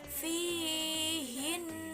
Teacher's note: Contohnya fihinna, dia harus dengung. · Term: huruf gunnah